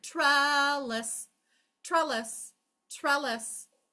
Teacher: So, the first syllable lasts the longest.